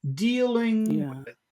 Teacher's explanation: in the first syllable start high and finish the syllable low